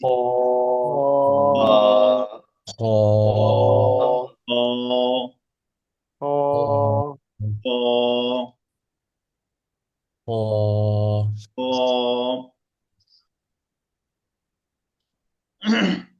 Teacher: এ আকার থাকবে না, একদম গলার শেষ থেকে